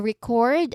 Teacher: For record, the second syllable is stressed.